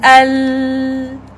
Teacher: So when we pronouncing the letter of lam, we have to know which part of the behind incisors that we have to push it. Tip of the tongue with the incisors. It's incisors, but we push more to the teeth.